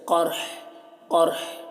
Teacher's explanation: اصابہم القرح، قاف کو پر پڑھنا ہے، را کو بھی پر پڑھنا ہے، اور یہاں پر اگر وقف کریں گے تو ہا کی آواز کو ظاہر کرنا ہے، ہا کا جو ہے پیش سکون سے بدل جائے گا اور ہا کی آواز کو ظاہر کریں گے، جیسے قرح قرح، اس طرح ایسے نہ ٹھہرنا بہتر ہے یہاں پر۔